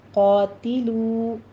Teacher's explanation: قا کہنا ہے، ٹھیک ہے، تی یہ باریک ہو جائے گا، تا کو باریک رکھنا ہے کسرہ کی آواز کے ساتھ